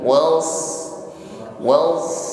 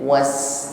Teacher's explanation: Kalau sin ringan saja, was, tetapi shad isti'ala, pangkal lidah atau lidah bagian belakang terangkat ketika mengucapkan shad. Jadi ketika shad sukun, was, lebih tebal daripada sin sukun.